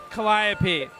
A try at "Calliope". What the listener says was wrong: You put the emphasis on the wrong syllable.